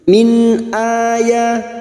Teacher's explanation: nun sukun bertemu hamzah idhar halki, nun sukun dibaca jelas tanpa mendengung.